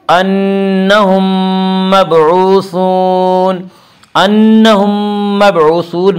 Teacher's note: اس کا قاعدہ ہے کہ میم ساکن کے بعد اگر دوسرا میم آئے تو وہاں پہ ادغام شفوی ہوگا